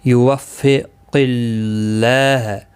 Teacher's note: یوفق اللہ قاف مستعلیہ ہے، پر پڑا جائے گا. اللہ کا لام اس زیر کی وجہ سے باریک پڑا جائے گا.